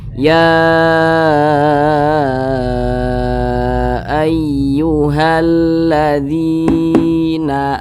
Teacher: Ini dibaca panjang, panjangnya itu 2 harokat atau kira-kira 2 ketukan. Mat tabi'i namanya.